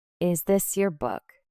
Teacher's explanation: Your voice rises on book. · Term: rising intonation